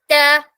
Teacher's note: ലെറ്റേഴ്സും പറയുമ്പോൾ ട പറയുമ്പോൾ നമ്മൾ നല്ലോണം പ്രസ്സ് ചെയ്യും നമ്മുടെ നാവിന്റെ അറ്റം ട എന്ന് പറയുമ്പോൾ ഈ മുകളിലെ പല്ലിന്റെ റൂട്ട് ലൈനിൽ റൂട്ടിൽ അഥവാ ഗം ലൈനിൽ നല്ലോണം പ്രസ്സ് ചെയ്തിട്ടാണ് പറയുക